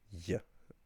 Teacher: In every dialect, by default, slender DH or slender GH is pronounced as y, or if you like, a more native sound, y, which is just putting your tongue closer to the roof of your mouth